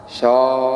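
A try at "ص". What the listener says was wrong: Bukan shaw, ya itu belum. So. Bukan di tengah lidah tapi di ujung lidah. So, bukan shaw.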